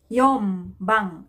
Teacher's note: right so you add bang for fourth so yom bang so instead of young change the sound into m is because n is followed by letter b consonant letter b so the sound may change to m